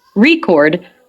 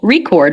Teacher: has stress on the first syllable, record, when it's used as a noun, but it has stress on the second syllable, record, when it's used as a verb